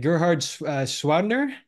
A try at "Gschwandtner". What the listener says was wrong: Gschwandtner. You don't pronounce the G.